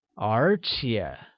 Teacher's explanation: Moreover translates as 而且, which is spoken using a mid-rising tone on the first E and a falling rising tone on the second